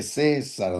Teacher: Que se vuela la A y nada más se va directo al E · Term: diptongo